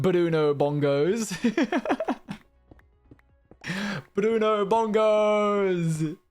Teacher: Gotta love that rolled R in there for no reason whatsoever.